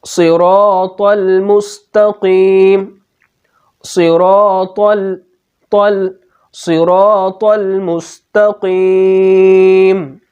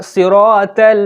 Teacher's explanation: جیسے ہم پڑھتے ہیں صراط المستقیم، صراط المستقیم، تو ہم طا کو بھی پر پڑھتے ہیں، طا کو بھی موٹا پڑھتے ہیں، طا میں بھی تفخیم پائی جاتی ہے. اور اگر ہم نے طا کو باریک پڑھ دیا تو یہ تا بن جائے گا، طا نہیں رہے گا بلکہ تا بن جائے گا، طا کا حرف تا میں بدل جائے گا.